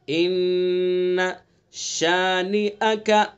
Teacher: ایک الف کے برابر ناک میں رکیں گے